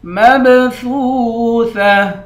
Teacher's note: آخر میں گولتا ہے، گولتا پر جب وقف کرتے ہیں تو گولتا ہاں بن جاتی ہے · میم کے بعد با ہے، با حروف قلقلہ ہے، یہاں پر قلقلہ کریں گے، سا کو واو کے ساتھ ملا کر واو کو ایک الف کے مقدار کھینچ کر پڑھیں گے۔